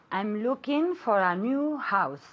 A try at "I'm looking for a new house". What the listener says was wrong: I want you to pronounce the NG at the end I'm looking okay it's a nasal sound